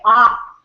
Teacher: the size is it's complete it's like you fully open mouth you open your mouth fully the resonance chamber is fully open maximum size and without any obstruction the sound ah is produced